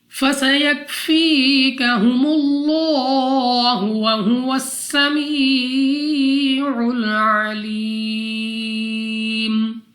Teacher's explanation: سین سیٹی والی آواز کے ساتھ پڑھنا ہے، یا ساکن سے پہلے زیر یا مدہ 2 سیکنڈ تک لمبا کرنا ہے۔